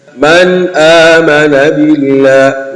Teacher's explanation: unatakiwa udhihirishe na wala usilete ghunna. Yani bimaana herufi zile za pale uzibainishe, yani ile nuni sakna na ile herufi inayofuata, yani ile herufi ya mudhari ya idhhar unatakiwa udhihirishe.